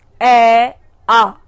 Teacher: ए आ, मैंने ए और आ बोला तो ए कंठ से निकला, क्योंकि इसमें ना तो जिह्वा का प्रयोग हुआ, ना तालु का प्रयोग हुआ, ना दांतों का प्रयोग हुआ, ना मूर्धा का प्रयोग हुआ और ना ओष्ठ का प्रयोग हुआ। मैं पुनः एक बार आपको बोल के दिखाती हूं, ए आ केवल कंठ से हुआ है।